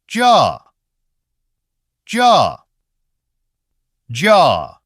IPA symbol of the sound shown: dʒa